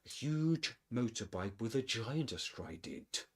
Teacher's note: Okay, with motorbike with a giant astride it, we get the same rhythm, but huge breaks the rhythm a bit because of this emphasis the narrator places on it